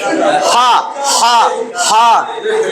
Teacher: হলকের মধ্যখান থেকে 2 নম্বর মাখরাজ